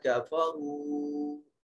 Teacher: واو مدہ لمبا کر کے پڑھیں گے اور جوف دہن سے ادا کریں گے، اور را کے اوپر پیش ہے، ضمہ ہے، اس لیے را کو مفخم یعنی موٹا اور پر کر کے پڑھیں گے۔